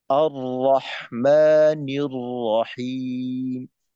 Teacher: র যখন জজম বা তাসদিদ থাকে ওই ক্ষেত্রে খেয়াল রাখতে হবে র এর উচ্চারণটা যেন বারংবার হয়ে না যায়